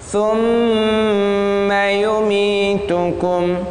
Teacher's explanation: Gunnah dulu di mim karena mimnya ada tasydidnya.